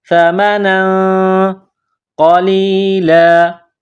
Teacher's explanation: سا زبان کا سرہ تھوڑا سا باہر نکالیں گے، سا کو نرم کریں گے، سا زبر سا، میم زبر ما، سما، نون دو زبر نن، سمن، تنوین کے بعد قاف ہے، حروف اخفا ہے، تو یہاں آواز ناک میں چھپائیں گے اور اس ناک میں آواز چھپانے کو اخفا کہتے ہیں۔